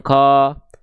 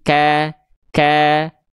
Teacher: kafnya berharakat baris atas dipercikkan saja dengan vokal a yang tipis ya. Ka, jangan ko tapi ka ka gitu ya.